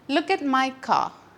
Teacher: Last റ് sound silent ആണ്, അല്ലെങ്കിൽ നമ്മൾ അതിന് സ്ട്രെസ്സ് കൊടുക്കില്ല, പ്രൊനൗൺസ് ചെയ്യാറില്ല.